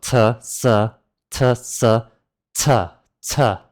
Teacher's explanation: So that's the English ch. Now the Cantonese C is made combining the sounds of t and sa instead of sh